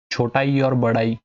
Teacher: छोटा ई और बड़ा ई ये तालु से उच्चारित होते हैं